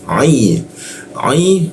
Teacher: huruf ain itu posisinya di Jakun ya. Ai masuk ke ya.